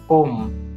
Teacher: લંબાયેલ સ્વર જેને પ્લુત સ્વર તરીકે ઓળખવામાં આવે છે તો તેમની ત્રણ માત્રા છે